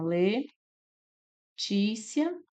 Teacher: né que separa dessa forma le tícia nós temos aqui uma paroxítona sílaba mais forte a penúltima terminada em ditongo crescente